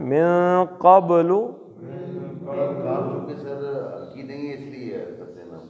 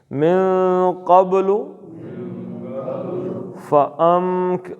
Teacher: نون کو ناک کے بانسے سے ادا کرنا ہے اور با کا قلقلہ کرنا ہے